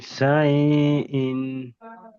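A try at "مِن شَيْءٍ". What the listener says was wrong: শাই টান দেবেন না, শাই, শাইটা টান দেবেন না, শাই এটা ইয়া, ইয়ালিন, ইয়ালিন নরম আওয়াজে তাড়াতাড়ি পড়তে হয়। মিন শাইইন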